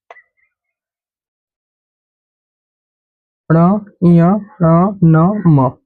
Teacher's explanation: ये वायु नाक से निकलती है इन्हें बोलते समय नाक और मुख दोनों से निकलेगी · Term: नासिक्य व्यंजन